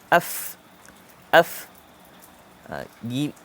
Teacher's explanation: Huruf fa ini, bibir bahagian bawah, ni bawah, bibir bahagian bawah, kenakan dengan gigi kacip atas. Gigi kacip yang ni.